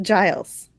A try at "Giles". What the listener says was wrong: Hard G.